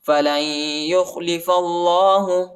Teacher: لام کو یا کے ساتھ ملائیں گے، نون نہیں پڑھا جاتا، نون ساکنہ ہے اور یا کے اوپر شد آیا ہے اور ادھر ہم غنہ بھی کریں گے.